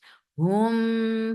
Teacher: This is idgham shafawi. So you idgham brings in gunna and this gunna is akmal. So keep the sound in your nose for a longer time.